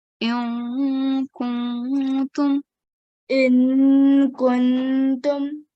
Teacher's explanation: prolong the vowel mad and then do the gunna on noon. Hold the nasal sound for 2 seconds.